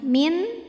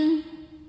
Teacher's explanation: Sebab ada nun sukun yang menghadapi huruf halqi atau huruf tenggorokan yaitu ain. Maka nun sukun ini kita bunyikan dengan jelas. Jadi ini bunyinya n dan tidak kita tahan ya. Min jelas hanya sekedar tawasud ya, sifat dari huruf nun. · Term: izhar halqi